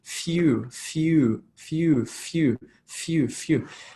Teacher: we've got that ooh long vowel sound